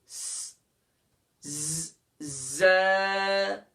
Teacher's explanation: زبان کے سرے کو دونوں دانتوں کے اندرونی کنارے پر لگائیں گے